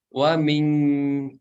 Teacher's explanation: Mungkin itu ya, Bu ya, ketika membaca ikhfanya masih kedengaran eng ya, karena ya ikhfa yang dibaca eng itu jika bertemu dengan huruf kaf ya. Huruf kaf itu kan tempat keluarnya dari pangkal lidah bagian belakang, maka itu akan eng.